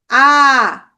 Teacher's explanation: আ ধ্বনির ক্ষেত্রে আমরা কি কি মনে রাখবো? নিম্ন, বিবৃত, কেন্দ্রীয় স্বরধ্বনি।